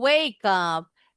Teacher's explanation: Linking consonant to the next vowel sound. Huruf terakhirnya itu K, bukan E.